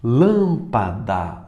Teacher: A terceira de trás para frente. Lâmpada, mais forte é o lã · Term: proparoxítonas